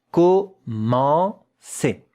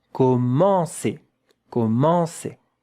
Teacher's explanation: Here it's a nasal vowel. Yeah, nasal vowel. There is a bit of air when you pronounce it that has to come out of your nose.